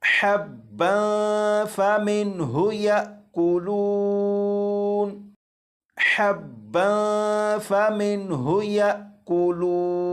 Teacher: اب یہاں پر دیکھیں یہ جو الف ہے الف کے اوپر جزم ہے، جب الف کے اوپر جزم ہے تو یہ حمزہ ساکنہ بن گیا، اور حمزہ ساکنہ کو ہمیشہ جھٹکا دے کر پڑھتے ہیں · جب با مشدد ہے تو اس با کو جماؤ کے ساتھ ادا کریں گے